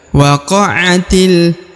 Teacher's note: huruf ti langsung masuk ke huruf lam yang harokat sukun ini ya. Alif yang di sini tidak dibaca atau tidak dianggap ya.